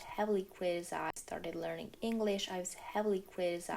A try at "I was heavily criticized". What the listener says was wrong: Yeah, so I was heavily criticized. I'm not hearing the was. I'm kind of hearing I's heavily criticized, which at least in off the top of my head, I don't think that's okay in most variations of American or Canadian English.